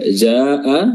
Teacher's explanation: Qad ja'ana, ya, ja'a di sini ada mad wajib muttasil, ya, di mana mad wajib ini yang di mana mad wajib ini berjumlah 4 harokat wajib, ya, atau bisa juga 5 harokat, ya, namun wajib panjang, ya, tidak boleh turun dari 4 harokat